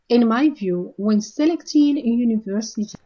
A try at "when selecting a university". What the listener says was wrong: I think you're saying selecting, right? So I think it's a word stress issue. You want to say when selecting a university.